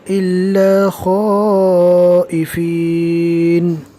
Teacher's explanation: یہاں پر مد کرتے ہوئے پڑھنا ہے، کم سے کم 3 الف کے برابر کھینچ کر پڑھیں، اس لیے کہ یہ بڑی مد ہے